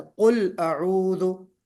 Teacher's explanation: कुल अऊदु में आऊदु हो गया, थोड़ा सा खिंच गया, लंबा हो गया, मद नहीं है। कुल अऊदु क्विक पढ़ना है जल्दी से, कुल अऊदु।